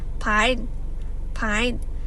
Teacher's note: For example, for F and P, instead of fine, they pronounce it as pine